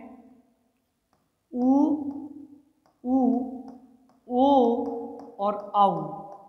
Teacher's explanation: वृत्ताकार के अंतर्गत होटों का गोल आकृति में होना वृताकार जिसमें होट है वह वृत के आकार के होते हैं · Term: वृत्ताकार स्वर